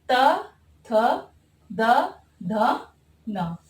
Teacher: इनका उच्चारण स्थान दंत से होता है।